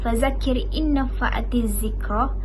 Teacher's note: Adik-adik baca dengan dengung 2 harakat.